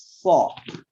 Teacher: Membaca sod itu juga bukan dengan o, tapi so. Jadi antara o dengan a, karena ditebalkan saja.